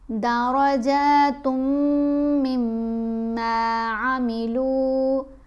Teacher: تا کو میم سے ملاتے ہوئے غنہ کر گیا، پھر میم کو میم سے ملاتے ہوئے بھی غنہ کرنا ہے